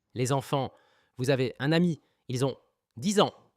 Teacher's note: আগের শব্দান্তের ব্যঞ্জনবর্ণ পরের শব্দের স্বরবর্ণ জুড়ে উচ্চারিত হয়, ঠিক আছে? এখানে দেখতে পাচ্ছেন যে শেষে এস রয়েছে, পরেরটা কিন্তু স্টার্টে কিন্তু ইএন, এটা কিন্তু ভাওয়েল দিয়ে শুরু হচ্ছে। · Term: লিয়াজো